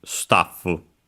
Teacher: luckily the accent is on the ta as expected, just like in English